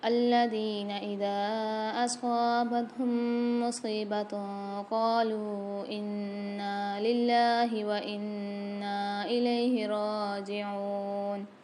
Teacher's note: انا للہ میں اللہ کے لام کو باریک پڑھیں گے اور انا میں نون کے اوپر مشدد ہے، غنہ کر کے پڑھیں گے اور کھینچیں گے بھی۔ وَإِنَّا نون کے اوپر مشدد ہے، مد بھی ہے یہاں پر، تو یہاں پر ہم کھینچ کے بھی پڑھیں گے اور غنہ کر کے بھی پڑھیں گے۔